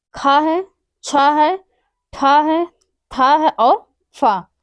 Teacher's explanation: खा है, छा है, ठा है, था है और फा, ये हमारे महाप्राण है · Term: अघोष महाप्राण